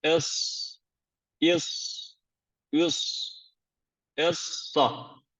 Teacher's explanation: dil ucu ile üst ön dişlerin iç yüzü Bazılarına göre ise yine Dil ucuyla alt ön dişlerin iç yüzü yani bakın Üst dişlerimiz alt dişlerimiz kimilerine göre dilimizin ucunun üst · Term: sat harfini